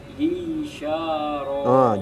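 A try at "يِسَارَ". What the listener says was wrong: Jangan sya. Yisaro. Jangan suka sya. Yisa tipis. Yisaro.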